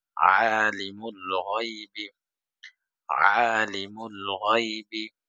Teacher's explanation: গয়ন হবে শেষ জায়গা থেকে, আইন হবে মধ্যখান থেকে গলার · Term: আইনের উচ্চারণ, গয়নের উচ্চারণ